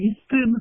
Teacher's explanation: அந்த நாக்கு அந்த பல் முதல் மருங்கின் அன்னத்திற்கு நெருக்கமாக உள்ள மேற்பல்லினுடைய அடியை போய் பொருந்த பிறக்கும்